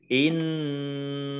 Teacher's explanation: Innallaha nun tasdid dibaca mendengung, ditahan 2 harokat. Kemudian Allahnya dibaca tebal karena harokat di depannya fathah